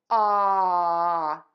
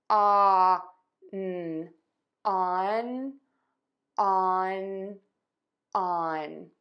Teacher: For on, we are going to pronounce it with an open, short, ah sound. You can see my mouth is in an oval.